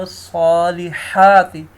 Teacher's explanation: ہا کو کلیئر کرنا ہے ہم نے، جو حلق سے ادا ہوتی ہے، ٹھیک ہے دوستو۔